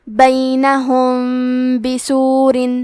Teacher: فَضُرِبَ، کلمت بینہم کے آخری میں میم ساکن ہے، پھر حرف الباء آتا ہے کلمت بسور۔ یہاں حکم ہے اخفاء شفوی، تو ہم یہ حکم کو غنہ کے ساتھ ادا کریں گے